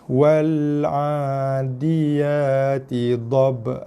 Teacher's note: dha mati jadi qalqalah dhabhan kerana kita berhenti, kerana waqaf jadi daripada han jadi ha dan panjang 2 harakat.